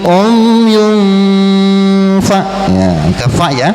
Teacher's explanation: Ketemu lagi tuh tanwin menghadapi fa, berarti ikhfa. Umyun tanwin menghadapi pa, jadi gunnahnya deketin ke huruf pa.